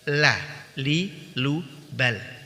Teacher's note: ujung lidah menempel pada gusi dan gigi bagian atas lah Lilu Ball Salah orang Indonesia tidak mengalami kesulitan ketika mengucapkan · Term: huruf lam